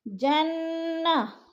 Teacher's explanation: نون مشدد ہے، سختی سے غنہ کریں گے۔